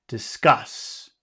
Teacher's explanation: the accent here is on cus